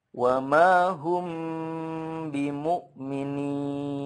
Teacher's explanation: kalau ada mim sukun bertemu ba, itu kan hukumnya ikhfa syafawi ya, itu harus bunyi emnya itu harus dipanjangkan atau ditahan sepanjang 2 sampai 3 harokat